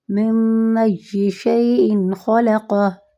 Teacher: من کو میں نے پورا کیوں پڑھا؟ کیونکہ یہاں اظہار ہو رہا ہے اور یہ نون ساکن کے بعد حمزہ کا حرف آ رہا ہے